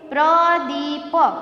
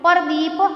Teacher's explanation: તો ગામડાના લોકો અમુક શબ્દ છે ને જો જોડિયા શબ્દ હોય ને તો એ છૂટા પાડીને બોલતા હોય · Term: ધ્વનિ શ્રેણી છૂટી પાડીને